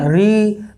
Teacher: तो री निकलना है तो मूर्धन्य से निकलता है